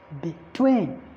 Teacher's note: So the primary stress falls on TWEEN.